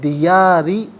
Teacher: اچھا دیاری پڑھیں گے تو را کے نیچے زیر باریک کر کے پڑھا جائے گا ، جب وقف کریں گے تو دیار اور را ساکن ہو